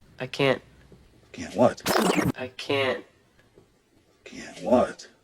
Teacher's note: Ese sonido de t se suele omitir y esperamos a que pronuncien t para nosotros poder entender. Y lo que hacen los nativos prácticamente es omitir el sonido manteniendo el aire.